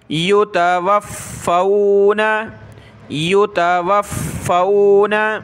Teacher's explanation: فا کے اوپر تشدید ہے تو اس کو سخت کریں گے اور فا کو واو کے ساتھ ملائیں گے۔ یتوفو، واو فا زبر وفا، واو زبر فو، وفو وفو، نون زبر نہ، یتوفون یتوفون۔